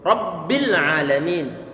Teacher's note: Ini ba bertasydid ini. Kalau ba bertasydid berarti perlu digandakan suaranya. Huruf-hurufnya enggak boleh rabi.